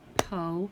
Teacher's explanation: The O is actually long here, and the E is actually a short vowel sound. So poet, but we're hearing both vowel sounds there.